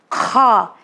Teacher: آئیے ہم آپ کو نیکسٹ لیٹر کی طرف لے کے چلے جسے کہا جاتا ہے کھا۔ کھا یہ بھی حرف ہلکی ہے مگر یہ حلق کے فرسٹ پارٹ سے نکلتا ہے